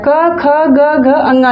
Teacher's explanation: क्योंकि ये क वर्ग में आता है, क ख ग घ अंगा, ये क वर्ग में आता है। इस वजह से क वर्ग में जितने अक्षर हैं, आपके लेटर हैं, वर्ण हैं, वो सब कंठ से उच्चरित होते हैं